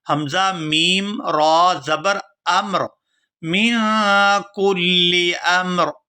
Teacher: من كُلِّ أَمْرٍ، یہاں پر بھی وقف کریں گے تو وقف کی صورت میں را جو ہے یہ ساکن ہو جائے گی، تو حمزہ کو میم ساکن اور را ساکن کے ساتھ ملا کر پڑھیں گے۔